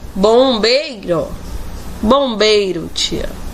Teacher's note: O E vem a ser a vogal e o I, com a entonação mais fraca, semivogal. · Vemos que o I está com entonação fraca em relação ao E. Este se sobrepõe no seu som. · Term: ditongo